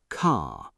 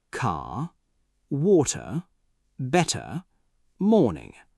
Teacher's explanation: in British English, you often soften or drop the R at the end of words.